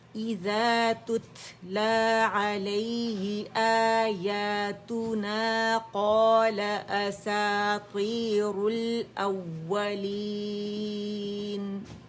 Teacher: تتلا تا میں ہمس واضح کریں گے. ٹھیک ہے. اور یہاں پہ مد بدل ہے.